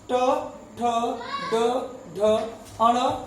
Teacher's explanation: ट वर्ग का उच्चारण मूर्धा से होता है